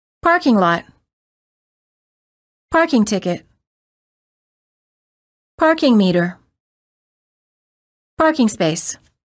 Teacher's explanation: stress the first word and pronounce the two words as one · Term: compound nouns